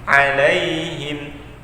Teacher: huruf ain itu di tengah tenggorokan kita bagian tengah